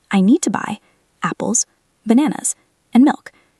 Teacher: Notice that even apples gets a pause after it.